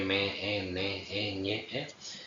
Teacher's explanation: Pasamos entonces a las sonantes o sonorantes, entre las que tenemos las nasales, son aquellas que para pronunciar el aire pasa por la cavidad nasal